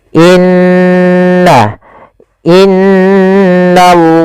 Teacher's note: kita membaca dengan lam tebal pada lafal Allah · n ditahan sepanjang dua harakat tidak langsung dibaca innallaha tapi ditahan dulu sepanjang dua harakat untuk menyempurnakan bacaan gunahnya. Inna innallaha kemudian lafal na tipis bertemu dengan lafal Allah.